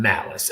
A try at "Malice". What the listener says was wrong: by the way it's not pronounced malice it's Italian it's malich